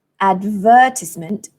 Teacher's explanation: this word advertisement four syllables advertisement the stress falls on the second syllable